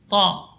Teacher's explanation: ta keluar dari ujung lidah menempel pada usul sanaya, pada pangkal gigi seri atas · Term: huruf ta